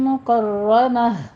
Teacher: مکرمہ میں را مفخم ہے، پر پڑیں گے اور آخر پہ تا کو ہا سے بدل دیں گے۔